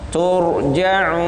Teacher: Tur ra. Sifat ra itu hurufnya tebal, apalagi setelah jatuh setelah dhamma.